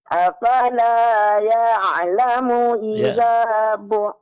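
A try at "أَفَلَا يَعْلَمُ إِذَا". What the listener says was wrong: Ya, bagus.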